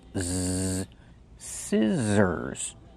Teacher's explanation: The middle consonant is the z sound, like zebra. Make the voice. Z, scissors.